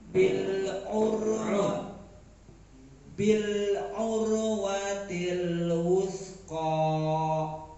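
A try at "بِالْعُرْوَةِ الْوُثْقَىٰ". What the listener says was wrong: Ya, jangan mantul ya.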